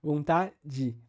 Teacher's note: esse e final tem a tendência de fechar ou seja um alçamento aí dessa vogal final para uma coisa próxima do i